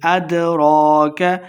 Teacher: دال حروف قلقلہ سے ہیں، ساکن خوب واضح کریں گے